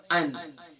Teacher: حمزہ کا ساؤنڈ گلے کے بوٹم